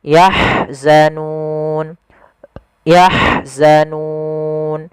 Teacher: ha alirkan, dia punya sifat rohawa, aliran nafas dan hamas